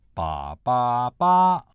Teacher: Ba is the highest tone in the higher hexatave.